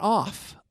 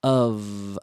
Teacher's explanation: And that F is pronounced like a V, which means it's vocalized.